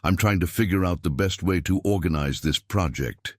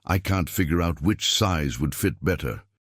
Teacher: the stress falls on both fig and out with the middle syllable almost disappearing